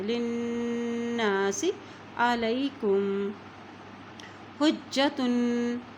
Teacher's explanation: لام کی زیر کو نون کے ساتھ ملائیں گے، نون کے اوپر شد ہے، اور جب نون کے اوپر شد آ جاتی ہے تو وہاں پر غنہ پہ کیا جاتا ہے.